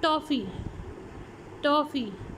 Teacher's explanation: तो आपकी blade of the tongue is raised towards the alveolar ridge in ट sound